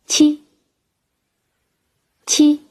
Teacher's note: 与发▁j▁音方法相同，只是呼出的气流比▁j▁强